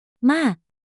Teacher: Fourth tone falling, starts high and sharply drops to low.